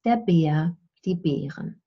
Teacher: And so Bär is the singular, Bären, the plural. So you hear the R definitely in the plural, but you don't hear it in the singular.